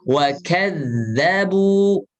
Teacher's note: huruf za itu punya sifat rokhawah, alirkan suaranya